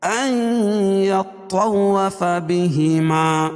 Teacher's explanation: فلا الف مدہ، جناح الف مدہ، علیہ یائلین ان یطوف بہما، اور یہاں ادغام مال غنہ ہو گیا کیونکہ نون ساکن کے بعد ادغام مال غنہ کے 4 حرفوں میں سے یا ہے تو یہاں غنہ کر کے پڑھیں گے